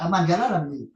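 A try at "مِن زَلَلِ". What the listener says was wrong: Bukan man, min. harusnya zala ya kalau muta'addi min zala. Kok ini zalala sih? Oh ya, min zalalil kodami.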